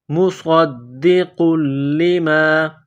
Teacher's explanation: صاد کو موٹا کرنا ہے، صاد میں سیٹی کی آواز پیدا کرنی ہے، صاد کو دال کے ساتھ ملانا ہے، دال کو دبانا ہے، سختی کرنی ہے، نقطہ والا قاف ہے، موٹا کرنا ہے، قاف کو لام کے ساتھ ملائیں گے، لام میں سختی کرنی ہے۔